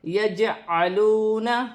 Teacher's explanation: جیم ساکن ہے، حروف قلقلہ میں سے ہے، تھوڑا قلقلہ پیدا ہوگا